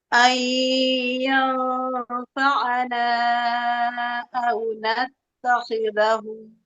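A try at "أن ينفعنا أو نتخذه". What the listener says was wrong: Nah, jangan natto, tapi natta. Ya. Jangan nattakhidha, natta. Nattakhidahu.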